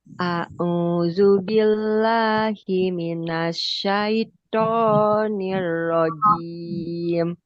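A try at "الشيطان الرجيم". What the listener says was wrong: Ya, itu jadinya eh to-nya justru sudah dekat sekali dengan huruf a. Syaito. Syaito. To. To. Syaito. kita pelajari secara rinci di mana keluar huruf to dan praktikkan huruf to secara benar.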